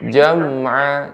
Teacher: huruf mim ketika sukun tidak memantul. Harus jelas.